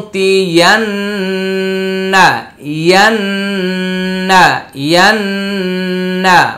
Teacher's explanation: এখানে খালি ইয়াটি পড়তে হচ্ছে না, ওয়া ঈসা, তারপর ওয়াও জবর ওয়া, মিম আলিফ জবর মা, ওয়া মা, 3 আলিফ টানতে হবে, হামজা ওয়াও পেশ উ, তাজের তি, উতি উতি, ইয়া নুন জবর ইয়ান, মাঝখানে আলিফ এবং লাম 2টি উচ্চারণে আসছে না